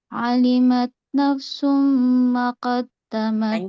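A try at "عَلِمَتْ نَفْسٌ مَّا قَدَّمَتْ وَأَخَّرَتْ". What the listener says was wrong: Panjang, banyak panjang. Ma qaddamat, ada alif. Panjang.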